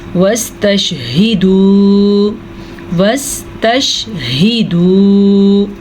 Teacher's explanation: ہاں کو واضح کریں اور واو مدہ کو کھینچ کے پڑھیں